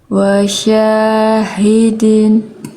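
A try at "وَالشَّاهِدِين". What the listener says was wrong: Nah, masih agak terlalu neken itu. Ya ulang.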